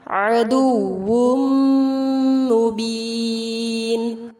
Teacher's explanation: تنوین کے بعد میم ہے، ادغام غنہ کے ساتھ کیا جائے گا اور مد عارض کے ساتھ وقف ہوگا.